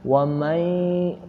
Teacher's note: jangan hanya masuk saja nun ke iya, tapi dengungkan, masukkan ke hidung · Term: Idgham bigunah